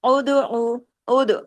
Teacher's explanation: دال پہ کلکلہ کیجئے، کتب جد کا لیٹر ہے، سکون کے ساتھ آیا ہوا ہے